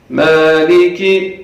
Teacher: میم کے اوپر کھڑا زبر ہے جس کو عربی میں الف صغیرہ کہتے ہیں، اس کو کھینچ کے پڑھنا ہے. مالکی، اور کاف کو جلدی پڑھنا ہے، اس کو کھینچیں گے تو غلط ہو جائے گا.